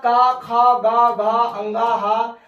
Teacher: ये कंठ से बोले जाते हैं